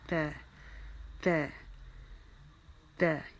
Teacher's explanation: تو زبان کی نوک ہو، ہم سامنے والے 2 دانتوں کی جڑ کا آئے گی، جہاں سے ہمارے دانت شروع ہو رہے ہیں، اور ہمارے مسوڑے جس کو ہم کہا جاتے ہیں، اس وہاں پر ہم لگائیں گے، اور وہاں سے ہم اس کو تا کو ادا کریں گے۔ ہم اپنے ہونٹوں کو اسمائلنگ پوزیشن میں رکھیں گے، تا تا تا۔ اس کو ہم باریک پڑھیں گے